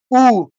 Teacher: কণ্ঠ ওষ্ঠ অর্থাৎ কণ্ঠ এবং ঠোঁটের কাজ। উ, কণ্ঠ দিয়ে বের হচ্ছে, ঠোঁটটা গোল হয়ে গেল